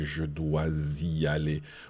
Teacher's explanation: We sound the S of dois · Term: liaison